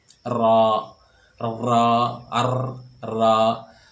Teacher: را کو اس انداز سے ادا کرتے ہیں، ایک وائبریشن سی پیدا ہوتی ہے۔